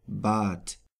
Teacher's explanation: at the end of a word, it is pronounced like a T